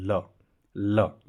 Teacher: जो जीवा है वो मसूड़ों को छूती है और वायु जीवा के दोनों बगल से निकल जाती है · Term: पार्श्विक व्यंजन